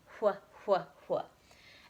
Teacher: If you say qua, you can still kind of feel some air on your hand, but if you're saying wh, you're really blowing it out